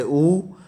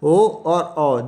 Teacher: जिन स्वरों के उच्चारण में होठों की स्थिति गोलाकार हो जाएगी, गोलाकार होती है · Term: व्रतमुखी